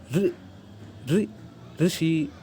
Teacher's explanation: जो इसका उच्चारण है वो दंत से थोड़ा और ऊपर को आइए, पीछे को दांत के, और जो वो है उधर से छुआ के छुआइए उसको थोड़ा जीभ को, और ऋ जो जीवा में स्पंदन होकर निकलेगा तो वो इसका सही उच्चारण होगा, जो कि कुछ ऐसा है ऋ ऋ ऋषि, ना कि ऋषि।